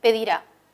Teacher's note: este verbo es agudo el acento está en la última sílaba pedir a ese verbo no podemos cambiar el acento no podemos